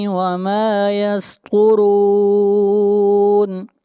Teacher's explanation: طا حروف مستعلیہ میں سے ہے، طا کو موٹا پڑھیں گے